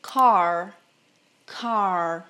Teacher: Esse R enrolado, a gente dobra assim a língua para trás.